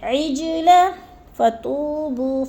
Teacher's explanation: جیم ساکن ہے، حروف قلقلہ میں سے ہے، ادھر قلقلہ کریں گے یعنی لفظ کو ہلا کر پڑھیں گے